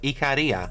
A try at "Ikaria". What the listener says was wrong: It's not. Ikaria. You say the first syllable needs to be E, not I, and the emphasis needs to be on the second syllable. Ikaria. You're putting emphasis on the re. Ikaria. Ikaria. Because of the name, because of the way the name is constructed? It derives from Ikari.